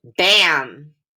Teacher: the m actually changes the sound of the short a so a and m come together and they're glued together because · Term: glued sound